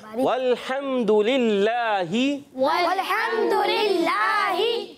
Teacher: इसमें जलाल का लाम है, अल्लाह पाक का लाम है यहाँ, मगर उससे पहले क्या आ रहा है, ज़ेर। तो क्या करेंगे यहाँ पर, बारीक करेंगे।